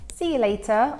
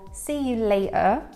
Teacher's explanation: see you later or see you later with a glottal t